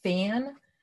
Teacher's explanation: it's an eh that goes up in your nose with the n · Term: nasalization